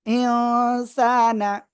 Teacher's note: নাকের ভিতরে নিয়ে গুণনা করে পড়বো, অনুসারের মতো গণ্য